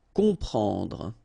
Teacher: Okay, you don't hear any M here. Okay, it's on. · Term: nasal